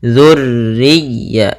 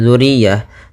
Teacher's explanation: ini tekan ya, ro-nya sama ya-nya tekan. Dzurriyya, jangan dzuriyah, tapi dzurriyyatahum fil.